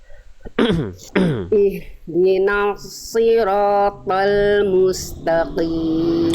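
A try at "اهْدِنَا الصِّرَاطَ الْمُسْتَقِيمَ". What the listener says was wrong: Tinggal di huruf ta. Ta tipis tebal Bunda. Jadi jangan taqim te. Ta. Ringankan pangkal lidahnya, buka rongga mulutnya. Ta. Coba sekarang mustaqim.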